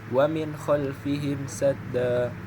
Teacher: nun mati bertemu dengan huruf k maka dibaca dengan jelas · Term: izhar